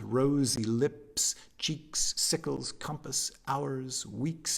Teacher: alliteration repetition of s and z sounds